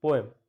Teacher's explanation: very short E sound is there, which sounds like semi-vowel Y sound, Y consonant